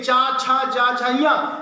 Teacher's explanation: चा वर्ग के जितने भी व्यंजन आपको मिलेंगे उनका स्थान कहां होगा, तालु होगा